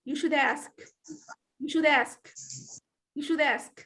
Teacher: here we have linking when i have a sound followed by a vowel